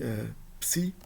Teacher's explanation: De sons, na verdade, que consistem em uma união de 2 sons, de um som oclusivo e de um som sibilante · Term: duplas